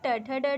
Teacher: next मुर्धा में होगा सारा ट वर्ग